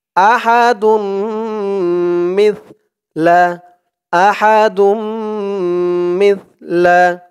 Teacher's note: তা আহাদুম মিসলা আহাদুম দাল দিয়ে এই তাসদিদ ওলা মিম ধরবে ঈদগামে বাগুন্নাহ গুন্না হবে আহাদুম মিম দিয়ে